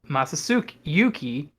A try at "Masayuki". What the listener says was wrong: Masayuki. So many syllables that you added there.